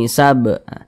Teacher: adalah huruf ba kalau dia sukun kita pantulkanab sab mantul dan ini dinamakan dengan Qalqalah kecil Qalqalah Sugra karena dia berada di tengah bacaan